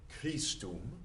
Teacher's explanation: Christum has a really hard K on it. It's an aspirated K, which means a lot of air comes out with it.